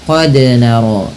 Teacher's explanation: dal yang berharakat sukun, maka pantulkanlah bunyinya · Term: qalqalah